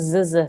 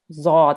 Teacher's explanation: this is not a zzz sound. It's not a buzzing sound. Zod, and it's a thick letter.